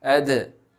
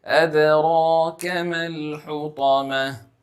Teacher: In the word أَدْرَاكَ, you will see that there is a dal with a sukoon upon it. So in this word, we will be pronouncing the qalqala. That is the doubling sound effect.